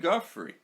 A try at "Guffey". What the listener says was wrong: Guffey? Guffey. No, it's just Guffey. No R.